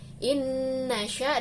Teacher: nun sukun bertemu dengan nun berarti dibacanya diidghamkan disertai dengung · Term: idgham biguna